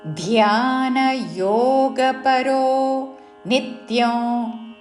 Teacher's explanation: మహాప్రాణాక్షము ధాకి యావత్తుతో